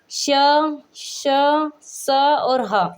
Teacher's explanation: जिन व्यंजनों का उच्चारण करते समय हवा मुंह में टकराकर ऊष्म यानी कि गर्मी पैदा कर दें, उसे क्या कहेंगे हम, ऊष्म व्यंजन कहेंगे